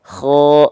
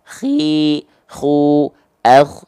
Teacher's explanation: Nah, kalau ghoin nama sifatnya adalah jahar, nggak keluar nafas. Makanya kalau melafalkan kho dia keluar dengkuran sedikit, kayak seperti dengkuran.